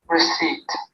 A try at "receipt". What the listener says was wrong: You said receipt. Oh, that sound comes. But in this, actually, there is no pa sound. You see, listen to it properly. Receipt. We usually say in the word P is present. That's why we sometimes tend to say receipt.